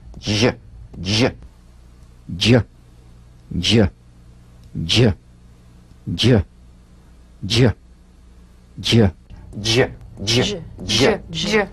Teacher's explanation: feel a voiced percussive sensation flowing from the hard palate onto the gum ridge.